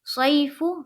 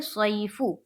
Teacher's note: یائلین کو نرم آواز کے ساتھ جلد اور معروف پڑھیں گے